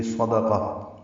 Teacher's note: تا مربوطہ پہ وقف کریں گے، یہ ہا میں تبدیل ہو جائے گی